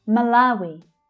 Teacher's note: So the middle syllable there is the stressed one, the strongest syllable.